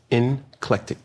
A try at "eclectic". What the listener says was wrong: It's eclectic. There's no N in it. Eclectic.